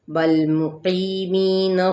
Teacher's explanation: قی پہ یا مدہ، می پہ بھی یا مدہ، یعنی ایک الف یا 2 حرکت ہم کھینچیں گے